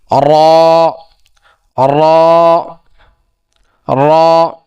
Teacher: যে জিহ্বার আগার উল্টা পিঠ, জিহ্বার যে আগাটা আছে তার উল্টা পিঠ দিয়ে তার বরাবর উপরে তালুর সঙ্গে লাগাইয়া। যেমন কি র, র, র।